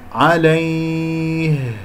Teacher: عليه هكذا يا أولين ساكنة قبل مفتوح، وها ساكنة أقف عليها بجريان للصوت، بجريان للنفس، باهتزاز الأوتار الصوتية من منطقة أقصى الحلق